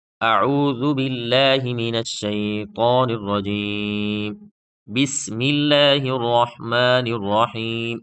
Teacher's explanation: بسم اللہ میں لفظ اللہ کا لام اور اعوذ باللہ میں لفظ اللہ کا لام دونوں باریک پڑھے ہیں کیونکہ دونوں سے پہلے زیر ہے